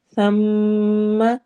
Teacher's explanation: میم پہ غنہ کرنا ہے اور اس کو لمبا کرنا ہے، ناک میں آواز ٹھہرانی ہے